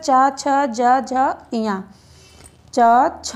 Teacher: जिह्वा और तालु स्पर्श कर रहे एक दूसरे से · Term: तालव्य